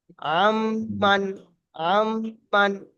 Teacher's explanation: নুন সাকিনের পরে মিম এসছে, ইউ মিনের অক্ষর, ইয়া ওয়াও মিম নুনের, মিম এসছে সেই জন্য গুণনা করতে হবে